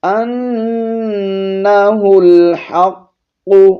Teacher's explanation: نون پر شد ہے، غنہ کریں گے ، ہا کو لام کے ساتھ ملائیں گے، ہا لام پیش